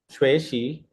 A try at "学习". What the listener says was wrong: Perfect. Now you can speak it.